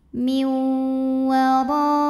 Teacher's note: Huruf ra dibunyikan secara tafkhim karena ra-nya ini berbaris di atas baris fathah. Maka cara bacanya dibunyikan dengan tebal. Miu wara. Ra mad wajib muttasil.